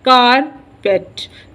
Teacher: कारपेट is pronounced with the stress on the first syllable कार, कारपेट.